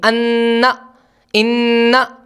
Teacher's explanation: نون مکمل ادا ہو رہا ہے، اس کے اندر تراخی ہو رہی ہے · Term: غنے